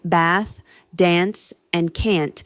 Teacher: First, the trap bath split. In British English, words like bath, dance, and can't use a long a sound, while American English maintains the shorter a sound.